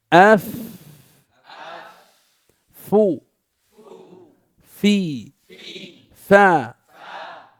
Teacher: وتخرج الفاء من أطراف الثنايا العليا مع باطن الشفة السفلى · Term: مخرج الفاء